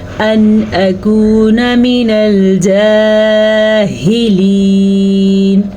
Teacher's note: ان اکون من الجاہلین، ان اکون، نون ساکن کے بعد والا حرف حروف حلقی میں سے ہے، تو نون ساکن کو ہم ظاہر کر کے پڑھیں گے اور بغیر غنہ کے پڑھیں گے